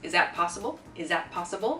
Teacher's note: it's like a z sound everything gets combined there